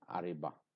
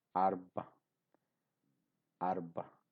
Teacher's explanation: So here ra is a silent or a semi-silent sound.